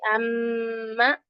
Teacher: ये गुन्ना कहाँ से अदा होता है? खैशूम से, यानी नाक के पासे से